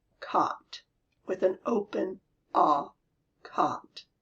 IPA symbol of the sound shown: kɒt